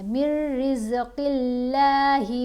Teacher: میم کو را سے ملائیں گے، را کو باریک پڑھیں گے · قاف کے نیچے زیر ہے تو ہم نے اللہ کی لام کو اب موٹا نہیں پڑھنا، باریک پڑھنا ہے